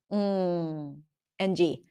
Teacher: The NG is pronounced where the back of the tongue goes up. NG. That's a nasal sound. · That's a nasal sound. The back of the tongue blocks the air inside the mouth, and the air comes out through the nose.